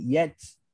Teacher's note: Yatba'u sebab apa? Sebab lidah dia dah lari daripada makhraj ta pergi ke makhraj sa.